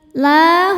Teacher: Kemudian hamzahnya i sama-sama ada pada kata alai. Maka lanya panjang boleh empat boleh lima harakat. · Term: mad wajib muttasil